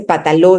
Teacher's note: hay omisión de la N en posición de coda